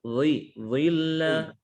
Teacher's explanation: dha harokat kasrah tetap tebal